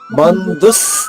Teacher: బా తర్వాత ఉన్న అనుస్వరాన్ని నాలా పలకాలి. బంధుస్ మళ్ళా తర్వాత సా తా వ 3 హల్లులు ఉన్నాయి ఈ అక్షరంలో.